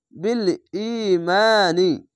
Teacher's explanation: বিল ই মিম আলিফ মা বিল ই মা নুন জের নি বিল ইমানি মিম জাবারের পাশে খালি আলিফ এক আলিফ টেনে পড়বেন আর জেরের পরে ইয়া সাকিন এক আলিফ টেনে পড়বেন